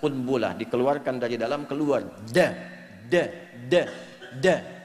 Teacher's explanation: Itu dua digabungkan. Da itu paling mudah karena tinggal meledakkan, ledakan dari dalam. Qunbulah, dikeluarkan dari dalam, keluar. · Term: qalqalah